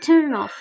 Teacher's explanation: The consonant sound carries over the next word.